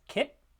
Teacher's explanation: So we have the k, the velar stop, and the t, the alveolar stop, both voiceless, in a word like kit. So we have voiceless stops there. · In the case dog, there's vibration throughout the articulation of the word. Whereas in kit, the only vibration is the time between the stops, not the stops themselves.